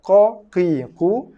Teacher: Ko dalam ketekak. Pangkal lidah.